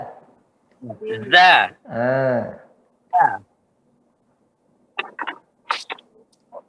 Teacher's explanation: Ujung lidah ketemu dengan ujung gigi seri atas.